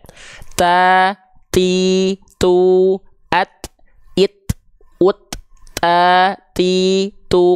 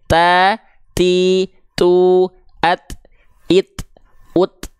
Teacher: Huruf ta dia punya sifat hams. Nah, hams di sini ternyata kadarnya bukan mengalir nafas ya, tapi hanya berupa percikan-percikan nafas saja. Tuh, hanya percikan nafas saja.